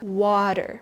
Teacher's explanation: the T in the middle softened into a D sound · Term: dropped T